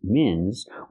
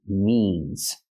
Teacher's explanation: We have to use the long E sound like green beans. E, not I, but E.